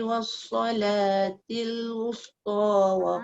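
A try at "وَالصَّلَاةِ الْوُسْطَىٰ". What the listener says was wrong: Jaga sin jangan wus, jangan kekalkan sin tu dengan muncung. Wusta. Tengok mulut saya bukan wus. Wus. Wus. Baru dia nipis.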